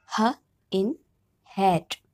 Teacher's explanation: a speech sound produced in the space between the vocal chords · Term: glottal sound